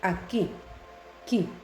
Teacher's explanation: La U no tiene sonido, es un grafema, por lo tanto ahí no hay diptongo. Aquí, qui. La U no tiene sonido, ahí hay un grafema, no hay diptongo.